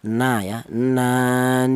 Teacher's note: huruf berasal dari ujung lidah menyentuh langit-langit mulut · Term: huruf nun